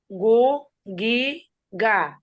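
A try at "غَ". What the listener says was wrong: গা বলা যাবে না। আমরা বলছি যে গইন অক্ষরে ফাতহার উচ্চারণে আকার পড়া যায় না, তাহলে কি বলতে হবে এখানে? গ। গ।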